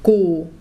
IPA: kuː